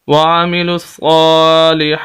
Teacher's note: صاد کے اوپر کھڑی زبر، ہا کے اوپر کھڑی زبر، دونوں کو لمبا کریں گے